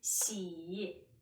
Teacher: 西 i xi, which tone? Third, so it's a falling rising tone.